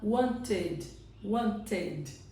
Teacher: já que acabou em T, para ficar uma coisa mais natural para eles, ele coloca o som de ED. Então, aqui o som vai ficar wanted, wanted, certo?